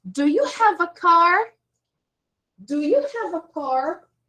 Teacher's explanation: the intonation in yes, no questions goes up all the time